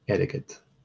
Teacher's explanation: between the R and the G, there's the epenthetic vowel, the helping vowel